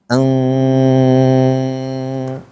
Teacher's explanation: maka cara bacanya eng ng eng-nya ditahan. Eng agak lama tuh.